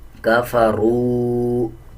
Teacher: را کو واو کے ساتھ ملا کے پڑھا جائے گا اور 1 سیکنڈ لمبا کر کے پڑھیں گے۔ جب واو کے اوپر جزم آ رہا ہو اس سے پہلے والے الفاظ کے اوپر پیش آ رہا ہو، اب جیسے یہ را کے اوپر پیش ہے تو اس کو ہم 1 سیکنڈ لمبا کر کے پڑھیں گے۔